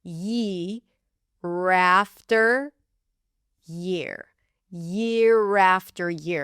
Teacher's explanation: The interesting thing about our vowels in phrases is that when the R appears at the end and the next word begins with a vowel, like here, year after year, then you can actually make the R become the beginning of the next word and then it's technically an R vowel because it is before a vowel, it's easier to pronounce it that way.